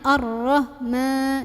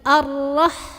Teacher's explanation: h-nya halus keluarin anginnya yang banyak jangan arah ma tapi arrah arrahmani Makanya juga lagi-lagi jangan kepanjangan